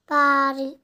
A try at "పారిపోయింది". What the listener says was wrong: పారి ఏంటిదిరా? పాకు ఓత్వదీర్ఘం కదా. పారి పాకు ఓత్వదీర్ఘం ఇస్తే